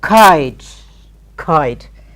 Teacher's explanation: K will be aspirated, but we do not show it